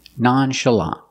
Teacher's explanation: the open ah sound like in hot and stop together nonchalant stress the first and third syllable that's the first and the last syllable